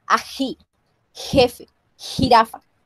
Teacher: La fricativa posterior J en las tierras altas andinas recibe una fricación audible y se palataliza entre los contextos, entre las vocales anteriores e I.